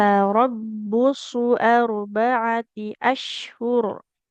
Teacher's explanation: tarabbusu, suatnya kan dhammah tidak bertemu waw, nggak boleh panjang ya.